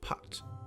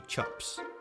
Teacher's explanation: we actually did something different with the I vowel and moved it back in our mouths so pit becomes put